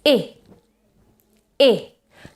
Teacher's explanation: it's a short vowel and it's lower it has to be produced lower than e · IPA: /ɪ/